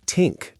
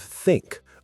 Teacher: Many learners replace it with a t or d sound, saying tink instead of think